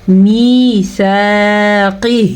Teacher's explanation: میثاقہ، میم زیر یا می، سا زبر الف سا، میثاقہ. قاف کو موٹا کر کے پڑھیں گے. قاف ہمیشہ ہی موٹا پڑھا جاتا ہے